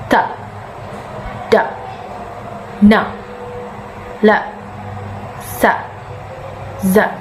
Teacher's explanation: Alveolar sounds are the consonant sounds are made when the tongue tip contacts the alveolar ridge or the gum just behind the teeth